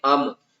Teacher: میم کے اوپر ہم غنہ نہیں کریں گے، میم کی آواز کو ظاہر کر کے پڑھیں گے